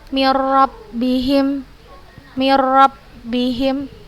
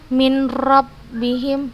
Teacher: Nggak usah kita baca lagi huruf nun ini, kita hilangkan dalam pikiran kita. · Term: idgham kamil